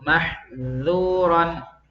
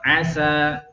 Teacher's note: Sempurnakan sifat infitah pada huruf dal ya dan sin, langsung keluar ya, jangan ditahan-tahan.